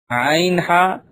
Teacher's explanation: حلق کے بیچ والے حصے سے ادا ہوتے ہیں